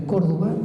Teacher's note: todavía hoy día el acento va en la primera sílaba